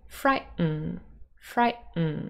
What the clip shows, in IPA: ˈfraɪ.ʔn